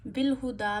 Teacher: बिल हुदा में हा का खास ख्याल रखिए। गले के आखिर से अदा हो।